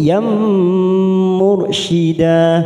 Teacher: Lahu waliyam, liyam masuk pada huruf ya tanpa ditekan lama-lama, hanya masuk liyam. Yam ada fathah tanwin bertemu mim, namanya idgham bi gunnah, kita tekan 3 ketuk